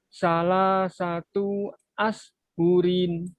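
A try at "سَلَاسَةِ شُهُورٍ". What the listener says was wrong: Hati-hati, itunya pendek. Salah satu ashhurin. Shinnya kurang mengalir. Ashhurin.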